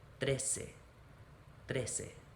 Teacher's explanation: 13, once again we have that TR combination, which is going to be best to start with biting the tip of our tongue, so it sets us up to make the R sound right after it